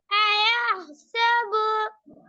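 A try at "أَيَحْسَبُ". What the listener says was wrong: என்ன நிக்குது போகணும் அப்படி. ஐயா சபு நிக்குது. தெளிவா ஓதணும்.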